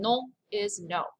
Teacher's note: it's not no like we would say it in english get that french nasal sound going